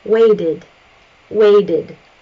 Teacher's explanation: The initial verb ends with a D sound, so we do add an additional syllable.